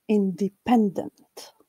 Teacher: this part of the word the second syllable D is unstressed the third syllable pen carries the mark of the primary stress